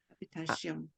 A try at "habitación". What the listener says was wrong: Habitación. And what you want to make sure is you don't have a sh at the end. Sion, sion, sion.